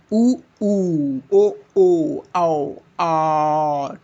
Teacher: वृत्ताकार, वृत्ताकार स्वर क्या है? ऐसे स्वर जिनके उच्चारण में होठों का आकार गोल हो जाता है